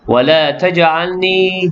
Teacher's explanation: jim yang sukun, qalqalah sughra berdetak kecil